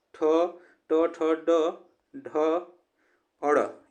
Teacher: यह मूर्धा से उच्चारण होते हैं। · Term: ट वर्ग